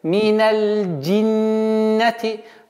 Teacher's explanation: Удержание в размере двух огласовок и назализация.